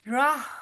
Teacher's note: پھر آگے پھر را کے اوپر زبر ہے، اس لیے را موٹا اور پر پڑا جائے گا۔ ہا کی ادائیگی جو ہے وہ درمیانے حلق سے ادا کی جائے گی اور سانس باہر کی طرف نکلے گی